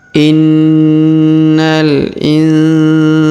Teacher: huruf Sa kita panjangkan dua harakat